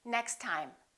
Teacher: We only pronounce one T.